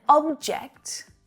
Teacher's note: got a noun and a verb to consider here an object object is a thing right the stress is on the first syllable